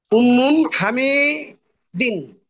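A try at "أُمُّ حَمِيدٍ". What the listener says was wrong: উম্মুন না, এখান থেকে একটা পেশ চলে গেছে।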